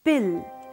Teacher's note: For example, in the word pill, the voiceless plosive p is followed by a stressed vowel and is in the syllable initial position